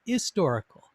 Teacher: they didn't pronounce the h or they didn't hear the h sound in historical so it was more like historical and then it would make